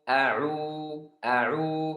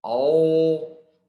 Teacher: Huruf ain keluar dari tengah tenggorokan langsung ke bibir. Dari tengah tenggorokan. · Suaranya banyak di dalam mulut dan pangkal lidah naik. Kalau seperti itu, ini namanya huruf tebal.